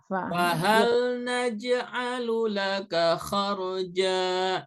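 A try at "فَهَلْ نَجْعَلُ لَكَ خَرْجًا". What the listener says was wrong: Nah, kaknya jangan panjang, pendek ya. Fahal naj'alu laka kharja.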